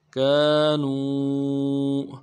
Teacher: بما كانوا کاف کے بعد الف مدہ ہے، ایک الف دان میں کھینچیں گے۔ نون کو واو کے ساتھ ملانا ہے، واو مدہ، نون ساکن سے پہلے واو مدہ کہلاتا ہے، ایک الف دان میں کھینچیں گے۔ كانوا بما كانوا يكسبون یا کو کاف کے ساتھ ملانا ہے، سین کی سیٹی باریک ہوگی، باریک ادا کرنا ہے۔